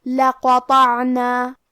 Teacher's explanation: حرف القاف اور حرف الطو کو دونوں کو بھاری آواز میں پڑھیں گے کیونکہ یہ دونوں حروف تفخیم میں سے ہے.